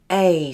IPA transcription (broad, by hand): eɪ